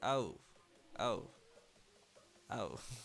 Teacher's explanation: So it's like it has an A sound in the beginning, ah, and then an O sound, oh, ow. Kind of sounds like when you get a paper cut.